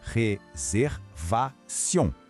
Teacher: Réservation. Percebe o som do R francês que a gente faz aqui na garganta e o final nasal sion.